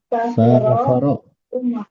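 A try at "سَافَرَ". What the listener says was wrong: Safaro ya, bukan Safiro ini salah. Salah kasih harakat ya.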